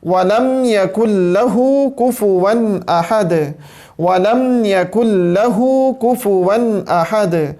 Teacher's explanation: اب یہاں پہ یہ آ گیا کاف، یہاں پہ پھر سے آ گیا کاف، ٹھیک ہے جی، دو مرتبہ کاف آ گیا، وَلَمْ يَكُنْ لَهُ كُفُوًا أَحَدٌ۔ کاف ہمیشہ باریک پڑھا جاتا ہے، اور اس کا مخرج زبان کی جڑ سے تھوڑا سا منہ کی طرف چلیں تو زبان کا وہ جو حصہ ہے اس کا اوپر کے تالو کے ساتھ ٹکرانا، اس صورت کے اندر کاف ادا ہو رہا ہوتا ہے، اور یہ باریک حروف میں آتا ہے اور نرمی سے پڑھا جاتا ہے۔